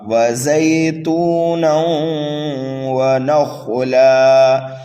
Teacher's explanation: دیکھیے تنوین کے بعد واو آ رہا ہے، حروف یرملون میں سے یہاں پر ادغام ہوگا، غنہ کر کے پڑھیں گے. خا کو پر پڑھنا ہے اس لیے کہ خا حروف مستعلیہ میں سے ہے. لام پر جب ہم وقف کریں گے تو یہاں پر بھی وقف بالابدال ہوگا. · الف مدہ کے بعد حمزہ اسی کلمے میں آنے کی وجہ سے یہاں پر مد متصل ہوگا اور قاف کو پر پڑھا جائے گا